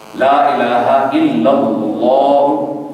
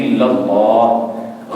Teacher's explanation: لفظ اللہ کا لام اسی زبر کی وجہ سے تفخیم کے ساتھ یعنی موٹا پڑا جا رہا ہے